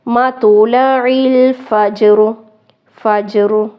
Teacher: یہاں پہ بھی اب دو ساکن حروف اکٹھے ہوں گے، لیکن جو جیم ہے حروف قلقلہ میں سے ہے، اس لیے اس کو یہاں پر ہلانا ہے اور را کو ساکن رکھنا ہے